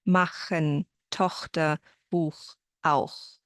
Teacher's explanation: what I call the back ch, because you make the sound in the back of your mouth or in the throat. It happens when the ch comes after an a, o, u, or the au combination, like in the words machen, Tochter, Buch, auch.